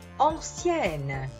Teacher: quando raddoppio la consonante N perdo la nasalizzazione